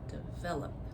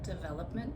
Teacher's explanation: So as you can hear develop I stress the second syllable and when I say development same thing stress the second syllable development.